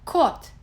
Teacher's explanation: O is a vowel similar to O in paw, but more closed. Kot. When O is unstressed, it sounds more like A.